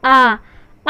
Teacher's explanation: विपरीत स्वर क्या है? उच्चारण के समय हमारा मुख द्वार जो है वह पूर्ण रूप से खुला रहता है